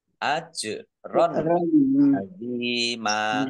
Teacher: Fathah tanwin bertemu dengan huruf ain, bacaan idhar dibaca jelas. Ajron azima kasroh ya sukun mat tobi'i panjang 2 harokat.